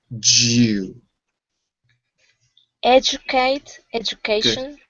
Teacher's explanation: Remember, before a U in English, there is normally the sound ya. So the ya mixed with the D is Jew.